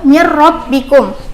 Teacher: Nah, kalau contoh dari idgham bila gunnah sendiri yaitu mir rabbikum. Apabila ada nun mati bertemu dengan huruf ro, dibacanya seakan ada tasdidnya